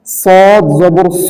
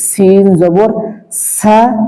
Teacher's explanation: শক্ত হবে এবং মোটা হবে, কিন্তু সিনের উচ্চারণটা পাতলা হবে এবং শক্ত হবে।